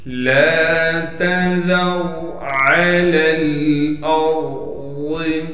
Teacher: عین کو صاف کر کے گلے سے نکالنا ہے۔ عین کے بعد لام ہے، اس لام کو ہم اس دوسرے لام سے ملا دیں گے کیونکہ دوسرا لام ساکن ہے۔ · عین کے بعد لام ہے، اس لام کو ہم اس دوسرے لام سے ملا دیں گے کیونکہ دوسرا لام ساکن ہے۔ ان دونوں لاموں کے درمیان یا بھی موجود ہے، الف بھی ہے، ان دونوں کو ہم نہیں پڑھیں گے اس لیے کہ ان دونوں پر زبر زیر پیچ کچھ نہیں ہے، لہٰذا پہلے لام کو دوسرے لام سے ملانا ہے۔